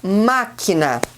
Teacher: o acento agudo ele vai indicar que a vogal tem uma pronúncia aberta na sílaba tônica